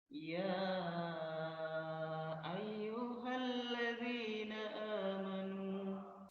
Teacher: Mad jaiz, oke. Panjangnya berapa harokat? Yakni 4 harokat.